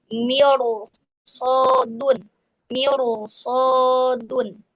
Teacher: Nah, ini huruf istilah. Jadi ketika ada ro sukun didahului kasrah bertemu huruf istila, maka rnya dibaca tafkhim atau tebal.